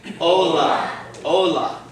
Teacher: the accent is going to fall on the second-to-last syllable